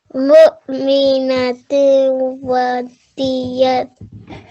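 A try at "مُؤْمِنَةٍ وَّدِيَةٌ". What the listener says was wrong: Here at waw mushaddad, we're going to give 2 seconds. Okay. So you've given less than 2 seconds. Mu'minatin wa diyatun.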